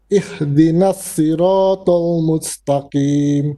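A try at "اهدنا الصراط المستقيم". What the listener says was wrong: Right, the sod we need to make a bit more heavy. Ihdinas si. Si. Now you said she. Si. Ihdinas siratal mustaqim. Okay, so this word sirata you have to work on in the ha a bit.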